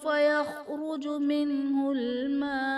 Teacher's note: یعنی نون ساکن میں ہم غنہ نہیں کریں گے۔ اور ہا پر کھڑا زبر ہے جو کہ الف مدہ کے قائم مقام ہے، اور حرف مدہ کے بعد عارضی سکون یعنی وقف کی وجہ سے مراکز ساکن کریں گے تو یہاں پر مد عارض کا قاعدہ ہوگا۔ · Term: اظہار